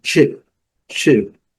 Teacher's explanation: Geralmente, antes do CH em inglês, nós devemos colocar um T imaginário